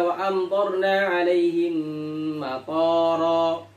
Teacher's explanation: matara dengan tok yang dipanjangkan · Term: panjang pendek